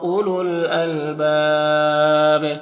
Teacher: यहाँ पर वाव और ये दोनों अलिफ में कोई हरकत नहीं, इसको नहीं पढ़ना है। अलबाब में वक्फ़ करेंगे तो मद्दे आरिज़ वक्फ़ी होगा, और बा में कलकला होगा